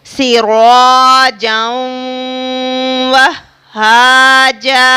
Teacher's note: تنوین کے بعد حروف واو ہے، یعنی حروف ادغام میں سے واو ہے تو یہاں پر غنہ ہوگا